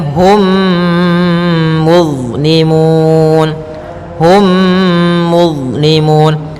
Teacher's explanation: masukkan mimnya kepada mim setelahnya dan ditahan. Hum, tahan gunnahnya. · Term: idgham mimi